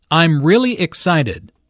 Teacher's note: notice the emphasis on really really is used to emphasize the adjective excited